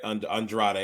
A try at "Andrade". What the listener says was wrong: Andrade is how they say it. Andrade. There's an R there. Andrade. You got to roll the tongue.